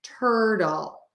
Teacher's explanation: that ER vowel and then the L after it turtle um you're gonna make that t as a D sound a super fast D sound